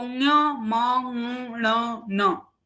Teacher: जो पांचवे सारे वर्ण हैं तत्सर्वे नासिकाः एव सन्ति, नासिक्यः एव सन्ति